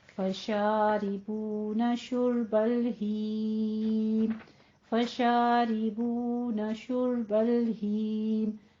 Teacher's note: फशारिबून शुर्बल हीम, फशारिबून शुर्बल हीम, शारी में रॉ मकसूरा जो है वो बारीक हो जाएगी, मुरक्कक पड़ी जाएगी